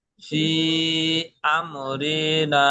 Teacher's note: হামজা দ্বিতীয় শব্দের প্রথম এসছে আর একে দুই থেকে তিন আলিফ পরিমাণ টান দিয়ে পড়তে হবে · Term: মুনফাসিল